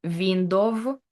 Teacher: a Ukrainian speaker can say window, because we just have sound V, but we don't have W. For us, it's something between V and U.